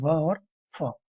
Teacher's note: जिसे निचला होठ और ऊपर के दांत से छूते हुए निकलते हैं वे व और फ और स्वर यंत्र से निकलने वाला है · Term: दंत उष्ट